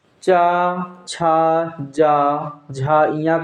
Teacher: चा, छा, जा, झा, इया का उच्चारण स्थान होता कहाँ से होता है? तालु से